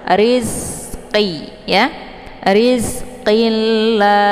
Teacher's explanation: Jangan nanti dibaca rizqi, tapi dibunyikan anginnya saja karena za ini sifatnya adalah shafir. Jadi bunyi anginnya lebih jelas.